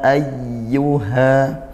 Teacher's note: hamzah dikuatkan, ya tasydid ditekan, ayyu dengan aliran suara, jangan terus ayyu, dan seperti itu, ya ayyuha.